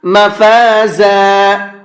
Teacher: مفازا، یہ زا ہے، زا کو سختی کے ساتھ میں پڑھا جاتا ہے